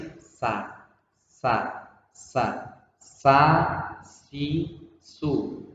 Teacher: huruf sin itu diucapkan dengan menempatkan lidahnya ini berada di belakang gigi bagian bawah, gigi seri yang bawah. Gigi ini lidahnya taruh di belakangnya itu di bagian bawah, kemudian posisi lidahnya tidak diangkat tapi posisi istirahat atau di bawah.